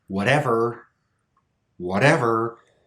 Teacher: the stress is actually on the syllable with T but we still make that flap sound